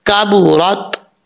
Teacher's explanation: اور را کے اوپر زبر ہے, را پر پڑھا جائے گا